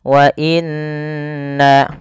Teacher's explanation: Pada lafal bacaan wa inna, pertama ini ada yang nun berharokat tasydid, harus ditahan suara nunnya. Wa inna, karena dia hukumnya ada bacaan gunnah.